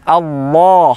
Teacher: huruf lam pada kata Allah itu memiliki dibaca dengan tebal